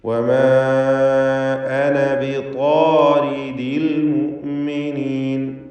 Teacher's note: വമാ അന ബിതാരിദിൽ മുഅ്മിനീൻ, വമാ അന, ഇതിലുള്ള അലിഫിന് മദ് മുൻഫസിൽ ജായിസ് നൽകി 4-5 ഹറക്കത്തിൻ്റെ അളവിൽ ദീർഘിപ്പിക്കണം. അന എന്ന പദത്തിലെ അലിഫ് വഖഫിൽ മാത്രം ഉണ്ടാകുന്നതാണ്.